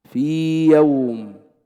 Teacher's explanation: قال أو كالياء نحو في يوم، الياء الأولى في، ياء ساكنة قبلها كسر، ياء مدية لا تدغم في الياء المتحركة